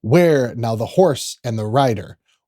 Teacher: kind of anapest so two unstressed syllables and one stress syllable the first four lines start with a stress and then go into anapest · it's mostly kind of anapest so two unstressed syllables and one stress syllable the first four lines start with a stress and then go